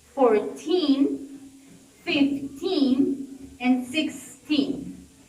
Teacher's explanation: in the numbers with ending on teen, the stress is gonna be in the second syllable.